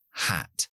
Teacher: la H es totalmente sorda nada de voz aunque viene de aquí es simplemente una aspiración de aire aspiración hacia fuera se llama en fonética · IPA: /hæt/